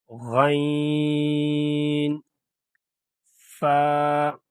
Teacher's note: غین میں آواز باری اور گونجدار ہوتی ہے · اچھا، اس کا مخرج یہ ہے، یعنی جہاں سے یہ حرف ادا ہوتا ہے تو یہ ادا ہوتا ہے اعلی حلق سے، یعنی حلق کے اوپر والے حصے سے، یعنی گلے کا وہ حصہ جو منہ کے قریب ہے